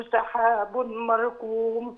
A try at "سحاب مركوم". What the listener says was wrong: سحاب مركوم، زودي الغنى شوي.